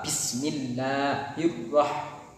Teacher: takrir yaitu satu kali getaran halus di ujung lidah